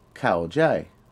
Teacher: The word for understand is kao jai, which is a falling, then medium tone.